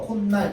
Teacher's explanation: 맞죠? 자, 그래서 코라는 소리랑 날이라는 소리가 만났는데 여기 사이에 뭐가 첨가됐어? 니은이 첨가된 거야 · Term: 니은 첨가